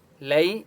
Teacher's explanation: یا لین ہے اس لیے لام کو لمبا نہیں کریں گے